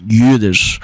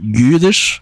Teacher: So yeah, if you're a German speaker, you might recognize the word Yiddish, and that is where Yiddish comes from, because the Ü sound in German has become I in Yiddish